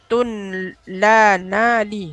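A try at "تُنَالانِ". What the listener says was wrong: nunnya 2 kali.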